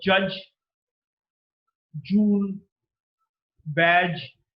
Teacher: Post-alveolar is from the back of the alveolar and is an affricate. So there is a total closure, but there is sudden release. · There is no sudden release. There is slow release, and there is some amount of friction. J, as in the word judge, jewel, badge.